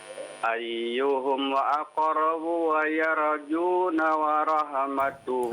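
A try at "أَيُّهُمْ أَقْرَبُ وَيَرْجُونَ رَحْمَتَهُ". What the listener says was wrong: Ah jangan ditambahin wau di sana ya.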